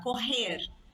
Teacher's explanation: é o r da garganta